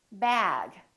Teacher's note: the vowel that comes before the voiced sound is longer